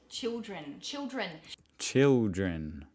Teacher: We turn our L's into W's.